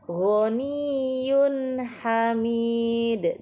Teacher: Kemudian di sini juga terdapat bacaan izhar halki, yaitu pada bacaan ghaniyun hamid. Di sini tanwin bertemu dengan huruf ha, dibaca jelas atau izhar halki.